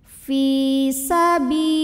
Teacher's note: Alif lamnya dinamakan dengan alif lam syamsiyah, karena alif lam menghadapi huruf syamsiyah yaitu lam, maka alif lam tidak dibaca ya, atau diidghamkan langsung ke lam berikutnya · lam pada lafaz Allah dibunyikan secara tarqiq, sebab huruf sebelumnya berbaris kasrah, maka bacanya tipis, lah pangkal lidah datar